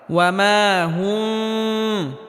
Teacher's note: বাকি কোনো জায়গায় গুন্না হবে না স্পষ্ট করে পড়তে হবে অর্থাৎ মিমে হালকা আওয়াজ জারি রেখে উচ্চারণ করতে হবে তবে গুন্নাহ করা যাবে না